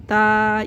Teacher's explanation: हमारी जुबान ऊपर वाले दांतों के पीछे लगी हुई होती है तो यहीं से पढ़ेंगे ता यही इसका मखरज है सा को